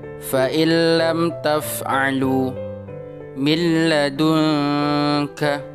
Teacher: Suara nunnya dimasukkan ke dalam suara lam tanpa disertai dengung. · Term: idgham bila guna